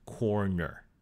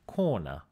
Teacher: most dialects in the US are rhotic, in that the R's at the end of words are pronounced, like in corner. However, there are many non-rhotic dialects in the US, like, for example, the dialect of New York City, where some people would say something like corner without the R.